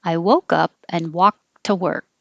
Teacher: for the past tense of walked, the D sounds like a T